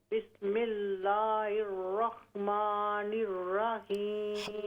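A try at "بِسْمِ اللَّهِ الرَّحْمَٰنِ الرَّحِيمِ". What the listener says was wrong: हा बिस्मिल्लाह, ये लफ्ज़ अल्लाह के लाम में जो हा है इसको क्लियर कीजिए। फिर ये बाज़-औक़ात ना तवज्जो नहीं होती तो अक्सर लोग पढ़ लेते हैं बिस्मिल्लाहिर। ये बहुत बड़ी गलती है, क्योंकि हमज़ा नहीं, यहाँ पर हा है।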